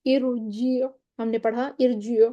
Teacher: ارجیع میں ہم نے کہا کہ را موٹی ہوگی